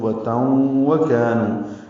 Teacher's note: ادغام ہو رہا ہے غننے کے ساتھ، واو ہونٹوں کی نا تمام گلائی سے ادا ہوگا، کاف باریک ہے، کا الف مدہ، نو واو مدہ، 2 حرکات لمبا کریں گے.